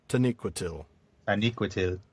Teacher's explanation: there is a secondary emphasis on that last syllable